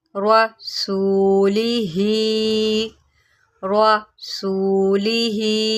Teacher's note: را کو موٹا کریں، را کے اوپر زبر ہے